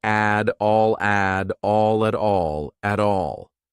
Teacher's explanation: I'll pronounce that T as a soft D.